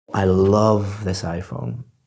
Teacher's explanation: I'm emphasizing the word love but if I said I love this iPhone that means you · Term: word stress